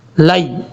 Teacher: لام کے بعد جو یا ہے اس کو لمبا نہیں کرنا، شارٹ کٹ پڑھنا ہے